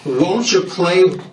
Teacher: nhớ cái âm won't nó âm O của nó rất là tròn